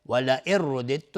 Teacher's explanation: دال و تا هر دو از یک جا مخرجشون یکیست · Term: ادغام متقاربین